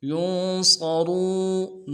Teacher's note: کو نون کے ساتھ ملانا ہے، نون ساکن غنہ کریں گے، صاد کو موٹا ادا کرنا ہے، را کو واو کے ساتھ ملائیں گے، واو مدہ، را کو موٹا کریں گے